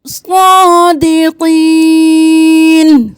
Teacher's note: یا مدہ ہے، یا ساکن ہے، اس سے پہلے والے حرف پر زیر ہے تو ایک الف کے برابر کھینچیں گے، اور صادقین نہیں کرنا۔